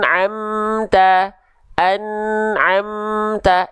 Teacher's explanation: mim sukun menghadapi selain mim dan ba cara bacanya mengizharkan mim sukun dari syafawi menjelaskan mim sukun dari bibir · itu diambil dari syafatain syafatain itu artinya kedua bibir nah Berarti izhar artinya jelas cara bacanya syafawi karena dia mim keluar dari syafawi dari bibir · An'am tuh jelas dari bibir, enggak samar. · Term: izhar syafawi, idhar syafawi